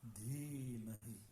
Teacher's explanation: And see the long line over that means it's a long E. It gets both a full sound and also a longer duration.